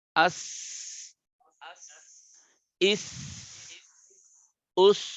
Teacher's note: আমরা জিব্বার আগা নিচের দাঁতের গোড়া দিয়ে সিনকে পড়বো আর জাকে পড়বো, আর জিব্বার উপরে দাঁত দিয়ে বাধাগ্রস্ত করলে আওয়াজটা এটা সফির হবে।